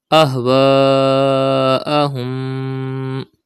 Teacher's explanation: You can see hamza after alif madda in the same word. It is madde muttasil. You have to stretch up to 5 harkat.